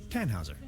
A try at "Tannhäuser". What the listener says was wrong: We'd pronounce it Tannhäuser with an umlaut.